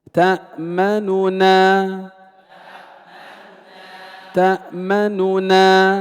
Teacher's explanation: ننطق بنونين لكن النون الأولى ضمها يسير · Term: الاختلاس